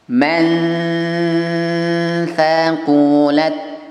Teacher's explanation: Miripkan bunyi n ke huruf tha, tahan 3 dan ujung lidahnya sudah menyentuh makhrajnya ta di ujung gigi atas. Mirip dengan ta n, separuh ta, ya.